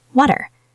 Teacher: the T becomes a fast D sound